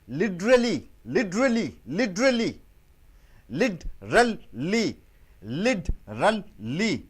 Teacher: Why do you use D instead of T? Because before T, I and E is coming. Vowels are coming.